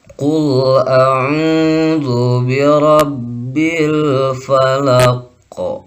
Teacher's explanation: Qalqalahnya qalqalah kubro karena sukunnya sukun aridi, yaitu sukun baru karena waqaf. Karena ketika wasol di sini tidak ada hukum qalqalahnya.